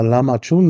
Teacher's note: Wir würden da Lahmacun sagen und das A vielleicht ein bisschen längen, aber da ist keine Reibung zu hören.